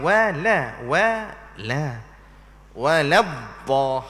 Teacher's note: Wala tu kena nipis, bukan tebal. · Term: nipiskan lam